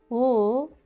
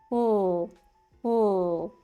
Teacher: And the tip is down. For the L sound, L, the tip is touching the back of your front teeth. L.